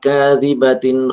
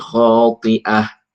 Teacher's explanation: Kalau di sini kadibatin dibaca nunnya dibaca karena wasol tapi kotiah tidak dibaca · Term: tanwin